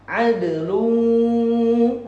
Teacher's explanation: wala adlun idgham bil gunnah, pakai gunnah masuk hidung